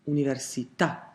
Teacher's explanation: some words are actually stressed on the very last vowel, università. And that will be spelt with an accent on that vowel.